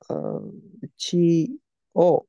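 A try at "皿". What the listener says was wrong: Close. This is sara. Looks just like chi though. Difference is like one line.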